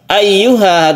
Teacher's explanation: ada tasydid ya yang harus kita tekan ke ya-nya